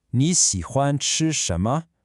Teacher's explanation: Can you hear those dipping third tones on ni and xi?